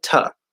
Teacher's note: Very frequently, most of the time, we will reduce the oo to the schwa sound, and we'll say ta.